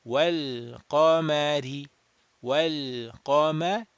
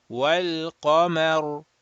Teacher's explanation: And then this ra sakin, if you remember, if it is preceded by a letter with a fatha, ra will be mufakham, rounded.